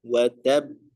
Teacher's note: Ketika didapatkan tasydid dan dia ya termasuk huruf qalqalah dan juga diwaqafkan, maka ya dibacanya itu ditekan terlebih dahulu ya, atau tasydidnya didahulukan ya, watab baru dipantulkan